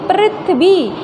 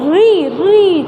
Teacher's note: होगा इसमें हमारी जो टंग होती है जो जीभ होती है जीभ का जो आगे का भाग होता है अग्र भाग जिसको बोलेंगे वो फोल्ड होके थोड़ा सा कहां लगता है ऊपर तालव्य पे लगता है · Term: ऋ